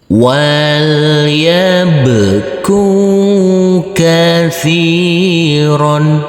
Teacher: huruf ro yang ber fathah tanwin ini kita kasih akhiran huruf N